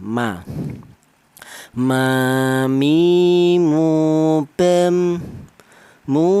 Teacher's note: Untuk huruf mim ini keluarnya huruf berasal dari kedua bibir yang rapat. Kita bilang ma, kedua bibir kita rapat dulu ya, ma.